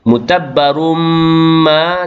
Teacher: tanwin bertemu dengan mim, idgham ma'al ghunnah, memasukkan tanwin ke dalam mim beserta dengung